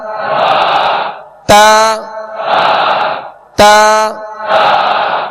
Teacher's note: मखारिज की लिस्ट में आप देखेंगे ता दाल तो का एक ही मखरज लिखा हुआ है कि जबान की नोक और ऊपर के दांतों की जड़ से अदा होते हैं